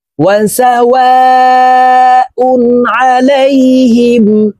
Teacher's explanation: এই ওয়া চার আলিফ টান হবে, কারণ মদের হরফের উপরে মোটা চিহ্ন বা মে হামজা মধ্যে মুত্তাসিল চার আলিফ টানিয়া পড়িতে হয়।